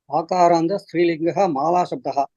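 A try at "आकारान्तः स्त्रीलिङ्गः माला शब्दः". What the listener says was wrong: Very good.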